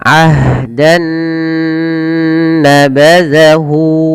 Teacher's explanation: caranya masukkan nun yang pertama kepada nun yang kedua, maka diidghamkan, maka dinamakan dengan idgham bi gunnah